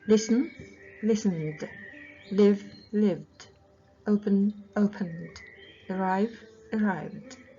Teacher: Ал яң болса, дыбыс буын соңындағы дыбыстар, онда д яң дыбыс болып айтылады ed-де.